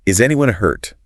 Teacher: With an upward inflection and a worried tone.